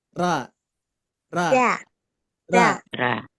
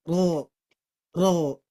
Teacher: huruf ro ketika berharakat fathah itu bukan tipis tapi tebal maka bunyinya ro ro ujung lidah ke atas ya ke langit-langit